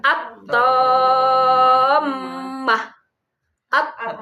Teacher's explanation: Jadi suaranya langsung lebur ke to. Alif lamnya tidak kedengaran lagi. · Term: samsiah